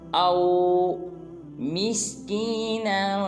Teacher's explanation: حمزہ کو واو ساکن کے ساتھ ملائیں گے